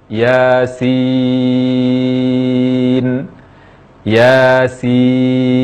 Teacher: Ya 2 harakat dan sin 6 harakat. · Baca ya 2 harakat tanpa imbuhan hamzah, tanpa menutup pita suara. Ya, baca 2 harakat saja, tidak lebih dari 2 harakat.